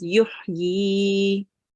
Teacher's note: the last word is a ya, and it carries a vertical kasra here, and the rule says that there will be no change, and the prolongation will stay for 2 counts. Okay, now if you want to stop here, you will just read it as yuhyi.